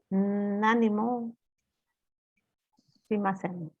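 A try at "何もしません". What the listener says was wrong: Perfect.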